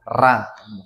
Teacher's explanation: ujung lidah itu bergetar di bagian atas